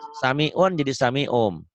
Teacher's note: kalau nun mati atau tanwin ketemu huruf iklab itu cuma hurufnya cuma satu ba, bunyi N-nya berubah menjadi M